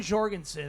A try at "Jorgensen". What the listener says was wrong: Jorg. There's no. They don't use J's. Okay, so don't say J.